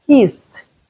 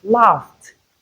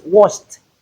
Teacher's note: when ed comes after any voiceless consonant sound, we realize it as t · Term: the t sound